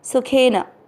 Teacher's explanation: यहाँ पर सुखेन शब्द को ध्यान रखना है, कुछ लोग इसको सूखेन नहीं करना है, सू की मात्रा बड़ी नहीं है, और न ही सुखेन करना है, ये दुख की जैसे सुख शब्द नहीं है, ठीक है, सुखेन।